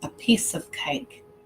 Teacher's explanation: the words ah and of are both pronounced as schwa and they're not stressed